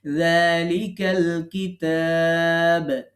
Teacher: মাল কারিয়া, আল কিতাবু, আমরা যদি এটাকে আলাদা পড়ি তাহলে পুরোটাই পড়তে হচ্ছে, কিন্তু যখন যালিকার সাথে যে যোগ করছি তখন আমরা আলিফটা বাদ দিয়ে দিচ্ছি কিন্তু লামটাকে পড়ছি